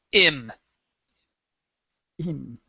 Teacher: that I comes from the back of your throat